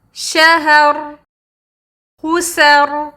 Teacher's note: تو جب وہ وقف کرتے ہیں تو را پہ تو سکون ڈال دیتے ہیں لیکن سین اور ہا کی سکون کو وہ لوگ حرکت میں بدل دیتے ہیں۔